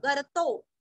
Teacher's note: महागर्तो, गर्तो ग के ऊपर आघात, आधा र, गर्तो। महाभूतो भू दीर्घ, महानिधि, नी और धी दोनों भी रस्व, विसर्ग का उच्चारण भी रस्व ही।